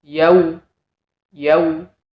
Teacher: Lin Seperti contohnya yau wau sukun yang didahului fathah yau yau vokalnya seperti u tidak boleh seperti O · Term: bacaan Lin